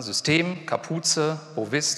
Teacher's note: Die haben alle die Betonung nicht auf der ersten Silbe.